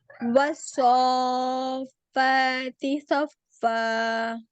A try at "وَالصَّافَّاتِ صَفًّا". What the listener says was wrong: آپ کا منہ گول کیوں ہوا؟ ہونٹ کیوں، گولائی کیوں آئی منہ میں صاد کے لیے؟ پیچھے جو ہے اس کی تو زبان کی جڑ ہی صرف اوپر اٹھنی ہے نا، اور آگے سے نوک لگنی ہے اس کے مخرج کے لیے ہے نا، لیکن منہ میں گلائی نہیں آنی.